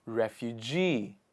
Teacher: the stress comes on the last part of the word refugee